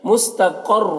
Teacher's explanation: قاف کو پر پڑھیں گے حروف مستعلیہ میں سے